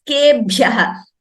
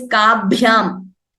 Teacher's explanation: Only Bha is Mahaprana. Ka is Alpaprana.